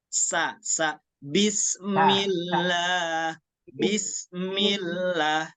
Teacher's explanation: itu ujung lidah ke Pangkal gigi seri bawah eh ke dua gigi seri bawah sa sa Bismillah Bismillah ikutin · dia memiliki suara tambahan yang tajam yaitu sirofir